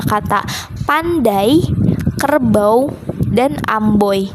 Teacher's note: Pada kata pandai itu vokal yang digabung itu ada vokal A dan vokal i. Pada kata kerbau itu vokal yang digabung itu ada vokal a dan vokal u.